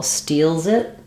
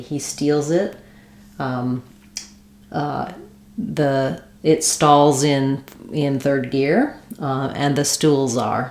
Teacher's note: So it doesn't have to be a strong Z, but as you link, you should hear a Z and not a voiceless S sound. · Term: Z sound